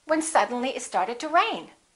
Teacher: rain would be your focus word